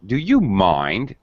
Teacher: I'm using strong intonation to also indicate that I'm not happy.